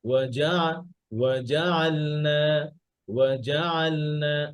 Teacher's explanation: ওয়াও এর আওয়াজটা একটু নিচু রাখবেন জিমের আওয়াজটা একটু উঁচু করবেন